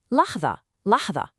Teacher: You'd say that middle sound, the da is really emphatic. Your tongue is right up behind your top teeth.